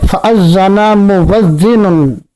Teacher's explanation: حمزہ کو واو سے بدل کر پڑھیں گے